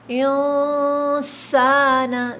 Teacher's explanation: سین میں سیٹی کی آواز آئے گی